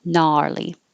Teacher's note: Gnarly, just the N. And the vowel is ah